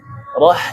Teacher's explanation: huruf ha kecil seperti orang kepedesan ya. Roh buat dia menyempit dan mengalir.